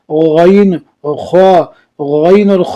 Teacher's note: خا اور غین حلق کے اوپر والے حصے سے ادا ہوتی ہے۔